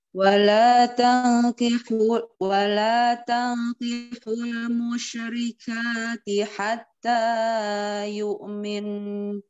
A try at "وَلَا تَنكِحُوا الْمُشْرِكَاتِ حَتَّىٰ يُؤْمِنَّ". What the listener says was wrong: Nah, tanya terlalu panjang. Ka sudah benar dua harokat. Musyrikati hatta. Ka sama ta sama. Hatta yu'min.